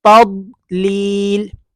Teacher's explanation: تا کو جب ضاد کے ساتھ ملانا ہے کہ اپنی زبان کو اوپر والی جو داڑیں ہیں، چاہے رائٹ سائڈ کی لگا لیں چاہے لیفٹ سائڈ کی، اپنی زبان کی کروٹ کو ان کے ساتھ ٹچ کریں گے تو یہ حرف ادا ہوگا